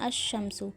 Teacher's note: جیسے یہ لکھا ہوا ہے ہم الشمس ہوتا ہے، الشمس تو نہیں پڑھتے ہیں، لام کو لام ہو جائے گا، ٹھیک ہے، لام کو نہیں پڑھیں گے تو ہم پڑھتے ہیں الشمس، یعنی لام تعریف کا ادغام ہوتا ہے۔ لام جو ہے وہ چھپ جاتا ہے، یعنی کسی چیز میں مل جاتا ہے